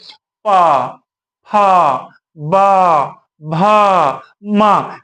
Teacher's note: जब हम इनका उच्चारण करते हैं तो हमारे होठ क्या है? आपस में स्पर्श एक दूसरे पर स्पर्श करते हैं। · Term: ओष्ठ वर्ण